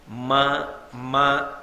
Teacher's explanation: రెండు పెదవులు కలిస్తే తప్ప మకారము పలకదు